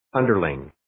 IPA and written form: 'əndərlɪŋ (Underling)